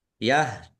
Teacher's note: ya sukun mad thobi'i panjang dua harakat